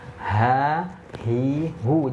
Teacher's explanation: Pangkal ya. Pangkal mana? Pangkal tenggorokan.